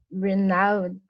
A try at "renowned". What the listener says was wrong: You don't say letter E. Say renowned. Very good.